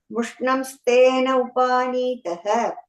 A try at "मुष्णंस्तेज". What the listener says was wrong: And then the second line, first word, Mushnam stage. I heard a na sound.